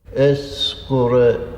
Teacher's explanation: There is a glide A or sound put between Sgur and Gereg.